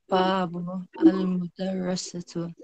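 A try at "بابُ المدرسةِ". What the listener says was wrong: So it's not al-mudarrisatu or al-mudarrisati, because that means female teacher. Yeah, we want to say this. We want to say the door of the school. So babul madrasati.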